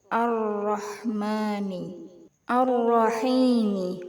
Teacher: Pada kalimah dalam potongan surah Al-Fatihah ayat 1 di atas, maka hukum tajwidnya adalah idgham syamsiyah. Karena ada lam ta'rif diikuti ro. Cara bacanya huruf lam dimasukkan ke huruf ro.